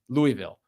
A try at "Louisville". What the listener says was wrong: Louisville. Louisville. You made it Louis. Louisville. Louisville. Like Louisville. Louisville.